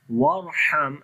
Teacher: Warham, again this Ra we read in heavy sound, ha read from the middle of the throat